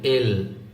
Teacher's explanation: জিহ্বাটা উপরের দাঁত আছে না উপরের দাঁতের গোড়ার সাথে লাগতেছে